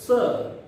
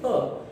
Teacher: आप देखिए जब स बोलेंगे आप तो स, और था बोलेंगे तो जीभ पलट जाएगी, था में जीभ पलटेगी, ऊपर जाकर लगेगी थ, तो थ दंतमूल से आएगा